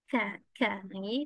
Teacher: Pangkal lidah juga bertemu dengan langit yang bertulang sedikit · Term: kaf